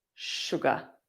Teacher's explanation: And notice in England, we don't tend to use the R at the end.